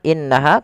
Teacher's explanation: inaha lafal qu karena dia mad thai dua harakat panjangkan kunya dua harakat kemudian berfal innaha kembali lagi ditahan sebagaimana innahu innaha tahankan dulu dua dua ketukan baru dilepas